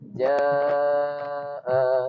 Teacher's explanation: membaca mad dengan kadar 4 harakat. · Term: tawassut